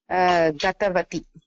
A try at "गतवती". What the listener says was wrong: अत्र गतवती दीर्घं भवति.